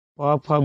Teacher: प फ बोलिएगा तो आपका दोनों होंठ आपस में सट जाएगा, ओष्ठ से आवाज आएगा